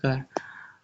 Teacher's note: कंठ अल्पप्राण व्यंजन वर्णों का उदाहरण है ग